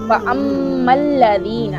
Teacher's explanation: यहाँ पर मीम मुशद्दद है, इसका गुन्ना करेंगे और दाल को नरमी से अदा करेंगे।